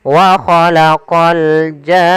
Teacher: Panjangkan janya dulu 6 harokat baru masuk ke nun. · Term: mad lazim kalimi musaqqal